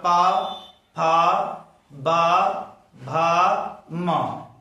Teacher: जैसे बोलिएगा प तो दोनों ओष्ठ एक दूसरे से चिपकेगा फिर अलग होगा तब उच्चारित होगा प है ना अब पूरे प वर्ग में होगा प फ ब भ म पांचो वर्ण में जो है ना दोनों ओष्ठ सटता है फिर अलग होता है यानी ओष्ठ की सहायता से बोला जाता है